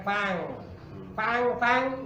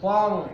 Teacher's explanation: Fang itu tipis kalau Fong dia tebal karena apa Karena bertemu dengan huruf tebal karena memang kaidahnya ea